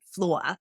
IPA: flʊɐ